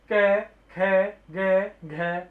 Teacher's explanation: कंठ में जिन व्यंजनों के उच्चारण सीधा कंठ से होता है, जिन व्यंजनों का उच्चारण सीधा कंठ से होता है और इनके उच्चारण में जीभ का पश्चिम भाग कोमल तालु को स्पर्श करता है